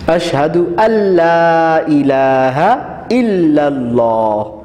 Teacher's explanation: اشہد اللہ، اشہد اللہ، یہ اصل میں ان لا ہے، نون کو نہیں پڑھنا تو اشہد اللہ پڑھیں گے